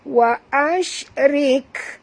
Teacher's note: Wa ashrik, bunyikan hamas pada kaf. Wa ashrik, jangan lantun pada kaf dia bukan huruf qalqalah